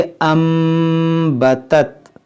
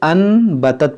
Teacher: यहाँ पर लगेगा इक़लाब, क्योंकि नून साकिन के बाद यहाँ पर देखिए बा है, और जहाँ भी नून साकिन और तनवीन के बाद बा आता है वहाँ पर हम इक़लाब करते हैं, यानी इस नून साकिन को हम नहीं पढ़ेंगे। यहाँ पर जो मीम है हम इसको पढ़ेंगे। इसको हम पढ़ेंगे अम्बतत।